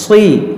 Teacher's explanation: صاد ہے، حروف مشتعلیہ، اس کو موٹا کریں گے